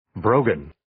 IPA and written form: 'broʊgən (Brogan)